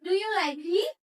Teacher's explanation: Jadi untuk contoh yes no bisa kita mengatakan do you like he? Jadi itu intonasinya naik ya